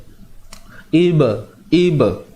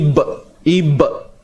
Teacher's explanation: Lantunan yang berlaku pada ba yang mati ni adalah secara ringan ataupun kecil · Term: qalqalah sughra